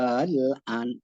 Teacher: Ibdal artinya mengganti hamzah kedua dengan alif. Al-an, panjangnya 6 harokat.